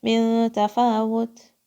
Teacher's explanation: This is soft ta, but you hear a little bit of air sound, right? I'm saying it with a little bit of air.